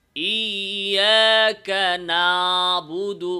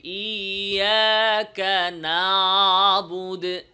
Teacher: না যেয়ে একটা সরসরি ভাবে ভাষাভাষা ভাবে আইনের মাখরাজে না গিয়ে আইনটাকে তার মাখরাজের গভীর থেকে উচ্চারণ না করে ভাষাভাষা একটা ছাড়া ছাড়া ভাব